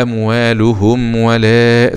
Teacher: مد جائز منفصل، ومد مقدار 4 أو 5 حركات من طريق الشاطبي